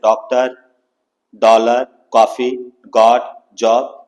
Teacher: अर्ध चंद्राकार का उच्चारण आ और ओ के बीच की मात्रा है